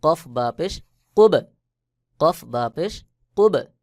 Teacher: বা কলকলার হরফ বা উপরে সাকিন এটাকে কলকলা করতে হবে